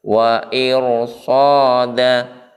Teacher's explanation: maka cara membaca ra sukun itu harus ditebalkan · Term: tafkhim